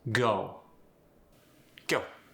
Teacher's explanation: the English O sound is going to transfer to an EO sound.